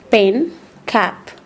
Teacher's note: This is a voiceless, a stop sound because the obstruction of the air by the articulators.